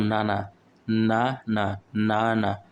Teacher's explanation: আমাদের দাঁতের উপরের পাটির দাঁতের গোড়ার সাথে লাগতেছে